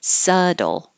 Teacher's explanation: there's a B in the spelling but there's no B in the pronunciation and the T changes to a d